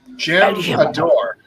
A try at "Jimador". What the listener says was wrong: I think the J is silent.